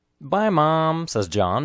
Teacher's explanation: the stressed words are bye mom and John the unstressed words are says as he the words linked together